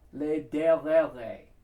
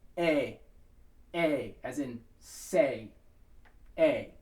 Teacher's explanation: It's not a, it's as in the word me, or the word death. You want that very flat sound. You don't want to have any a, no y and no a sound in there at all.